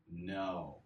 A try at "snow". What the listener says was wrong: Remember, we need that snake sound, so snow.